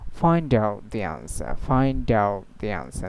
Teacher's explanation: after the T sound, when another consonant come, so simply they make it silent